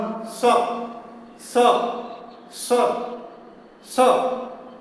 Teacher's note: जीभ का अगला भाग नीचे के दांत में, निचले दांत के अंदरूनी भाग में वो सट जाता है। तो पहले जीभ को आप नीचे दांत में सटाइए, निचले दांत में सटा के रखिए और उच्चारण कीजिए। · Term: दंत स्व